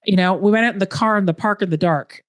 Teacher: And we really roll our R's. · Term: Canadian accent